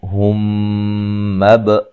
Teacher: میم ساکن کا ادغام ہے، غنہ کر کے پڑھیں گے